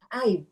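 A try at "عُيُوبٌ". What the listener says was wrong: Jadi bukan aib ya, tapi uyub.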